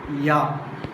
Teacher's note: Palatal. Articulated by the front of the tongue coming in contact with the hard palate.